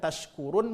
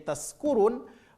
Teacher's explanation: Kalau shin tempat keluar hurufnya adalah tengah lidah, sedangkan huruf sin tempat keluar hurufnya adalah ujung lidah. Maka ketika orang salah menyebutkan tashkurun menjadi taskurun, mereka itu karena enggak faham tempat keluar huruf itu.